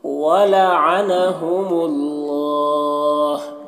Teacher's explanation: اللہ کے لام سے پہلے میم کے اوپر پیش ہے تو اللہ کے لام کو پر پڑھیں گے